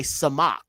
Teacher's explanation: so it' be zun right that's different than the samach because the samach is just a pure s sound with no T sound attached to it